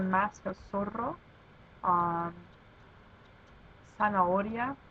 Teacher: in Spanish, there is no Z sound. So zeta sounds more like an S.